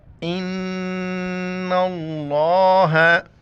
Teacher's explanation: لفظ اللہ کو ہم موٹا کر کے پر کر کے پڑھیں گے